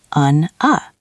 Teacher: On ends with an N. A is a vowel sound, so the N moves over.